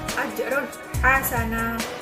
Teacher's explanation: Yang selanjutnya adalah ajron hasana, ada fathatin bertemu dengan ha, itu ha merupakan huruf dari idhar halqi yang mana dibacanya adalah jelas, yang dikeluarkan dari tenggorokan